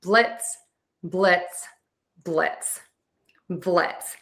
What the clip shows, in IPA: blɪts